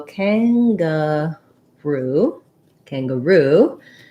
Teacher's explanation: it's kind of an unusual pattern for english third syllable stress